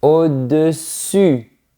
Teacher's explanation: La langue est en position avant. Elle touche les dents du bas